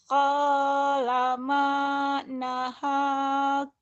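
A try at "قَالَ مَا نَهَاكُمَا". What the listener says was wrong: Cuman agak ketahan ya.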